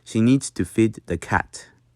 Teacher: So the I sound, instead of the long E sound, make it shorter and crisper.